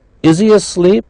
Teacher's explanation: the H was not pronounced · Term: reduction